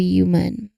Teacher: So if the sound if it's this H sound, a simple puff of air followed quickly by the Y sound. U this blend is also found in the human. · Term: HJ